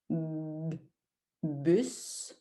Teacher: B, D, G. Alors, B, mes lèvres se frappent, mes lèvres se touchent.